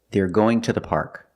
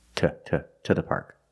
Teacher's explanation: We pronounce it as t when to is after a consonant and it's not stressed.